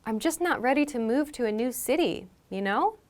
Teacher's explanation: if we position you know at the end of a sentence it tends to sound like a question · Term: upward intonation